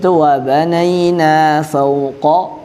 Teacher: qaf dia tebal. Sedangkan kaf dia tipis.